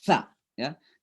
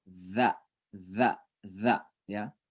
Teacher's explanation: Kalau sa itu kayak digigit dan didorong dengan keras. Sa ya. Kalau za lembut.